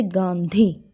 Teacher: जब हम उच्चारण करते हैं तो वायु जो होती है वो मुख और नाक दोनों से बाहर निकलती है, तो अनुनासिक व्यंजन कहते हैं उन्हें।